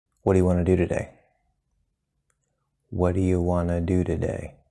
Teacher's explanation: we have Wana which is a reduction of want and two combined the t is disappearing